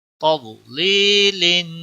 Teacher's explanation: واد کو موٹا پڑا جائے گا اور یہاں پر یا ساکن سے پہلے زیر ہے یا مدہ ہے، ایک الف کے برابر اس کو کھینچنا ہے.